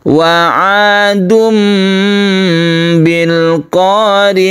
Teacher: iqlab artinya membalikkan suara tanwin atau nun mati menjadi mim mati karena dia itu bertemu dengan ba